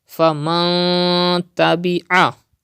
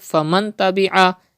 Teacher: to read noon sakin with gunna, with nasalization